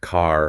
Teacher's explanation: Standard American English relies heavily on the rhotic R. That means pronouncing the R clearly in words like car